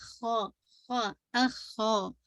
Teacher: خا کو ہیوی کیجیے گا لیکن ضمہ کو بھی واضح کیجیے گا